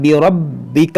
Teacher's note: را کو پر کریں گے، با کو خوب جماؤ کے ساتھ